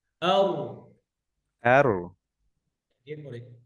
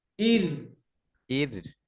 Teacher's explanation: এটা পাতলা, কাসরা আছে, কাসরার পরে র সুকুন, র লাইট